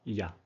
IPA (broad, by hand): j